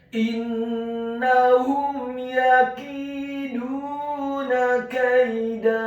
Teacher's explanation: Kata kaida, huruf kafnya dibaca tipis, tarqiq fathah 1 harokat. Huruf ya-nya dibaca sukun dan di akhir ayat huruf dalnya dibaca tipis, fathah 2 harokat karena setelahnya ada alif.